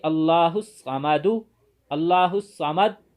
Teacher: قاری نے آواز تو نہیں نکالی لیکن ہونٹوں سے پیش کی طرف اشارہ کر دیا، تو اسے وقف بالاشمام کہتے ہیں، جیسے اللہ الصمد، اللہ الصمد، پیش پڑھی تو نہیں لیکن ہونٹوں کو گول کر کے پیش کی طرف اشارہ کر دیا۔